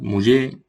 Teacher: pierde la R final